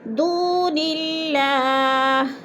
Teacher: دون اللہ، دو پہ وہ مدہ ہے، وہ ساکن سے پہلے دال کے اوپر پیش ہے تو وہ مدہ اللہ پر باریک پڑھا جائے گا، کیونکہ اللہ سے پہلے لفظ نون کے نیچے زیر آ گیا ہے تو ادھر اللہ کو باریک کر کے پڑھیں گے